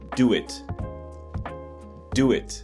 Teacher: a W was put in between those two sounds. So that's why it sounds completely different. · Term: intrusion